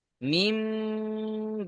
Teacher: দেখেন মিম মিম জের মিম বা আইন জবর বা মিম বা দাল জেরদি মিম বাদি মিমের নিচে যের হারাকাত হারাকাতের পড়া তাড়াতাড়ি পড়তে হবে টান দেওয়া নিষেধ নুন সাকিনের পরে বা এসছে নন সাকিনের পরে বা এসছে তাই নুন সাকিনকে মিমের দ্বারা পরিবর্তন করে এক আলিফ গুন্না করে পড়তে · নুন সাকিনকে মিমের দ্বারা পরিবর্তন করে এক আলিফ গুণনা করে পড়তে হবে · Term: ইকলাব